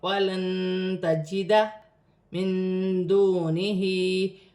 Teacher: दाल भी हुर्फ इख्फा में से है, वाव साकिन से पहले पेश है तो वाव मद्दा बन रही है। हा के नीचे खड़ी ज़ेर है, एक अलिफ की मकदार खींच कर पढ़ा जाएगा। · नून साकिन में भी इख्फा होगा। दाल भी हुर्फ इख्फा में से है, वाव साकिन से पहले पेश है तो वाव मद्दा बन रही है।